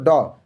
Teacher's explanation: ड यह मूर्धन्य में अल्पप्राण व्यंजन है।